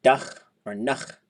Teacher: For the closed ones, like dach or nach, they're always short and high.